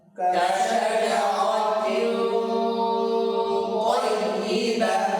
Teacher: ইখফা কেমন হবে? ভারী হবে। বাকি মুখের আওয়াজও থাকবে, নাকের আওয়াজও থাকবে। তয়ের মাখরাজ থেকে আদায় করতে হবে। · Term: ভারী ইখফা